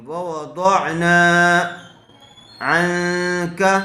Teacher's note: نون ساکن کے بعد حروف اخفاء میں سے کاف آیا ہوا ہے اس لیے غنے کے ساتھ اخفاء کر کے پڑھیں گے۔ عن کا، کاف زبر کا، کاف کے اوپر زبر ہے اس لیے اس کو جلدی پڑھیں گے، کھینچیں گے نہیں۔